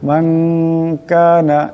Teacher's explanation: নুন সাকিনের পরে কাফ আছে কাফ ইকফার হরফ এখানে ইকফার একালিক পরিমাণ গুণনা হবে